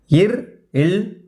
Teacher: மேல்வாயை நாக்கின் நுனி வருவதால் பிறக்கும் மெய்யெழுத்துக்கள்